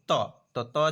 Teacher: છે તે ઓળખો દંત્ય એટલે દાંત વડે બોલાતો હોય તે તો ત છે એ દાંત વડે બોલાય છે બાકીના દાંત વડે નહીં બોલાય તો એને દંત્ય ધ્વનિ કહેવાય ત